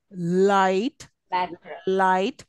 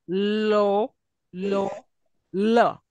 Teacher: Anything where you see L, the tip of the tongue touches the ridge of your alveolar ridge, upper side, but the air is escaping from the sides of the tongue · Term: lateral